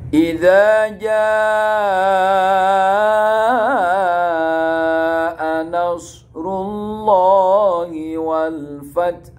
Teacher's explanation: lam jalalah dibaca tebal atau tafkhim, dibaca tebal tafkhim · lafaz Allah dinamakan tafkhim. Karena sebelumnya ada huruf ro dibaca dhamma, nasrullah.